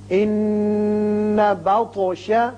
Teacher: نون مشدد ہے، غنہ کیجئے، اور طا ساکن ہے چونکہ اس لیے اس کی صفت قلقلہ ادا کریں گے. یہ حروف قلقلہ میں سے ہے.